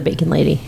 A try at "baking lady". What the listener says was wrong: Not bacon lady, but baking lady. Or just added the G.